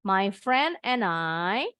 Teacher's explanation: nah sekarang bacanya disambung nih and i jadi any